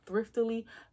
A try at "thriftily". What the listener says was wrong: Thriftily? Thriftily. No. You just added a syllable.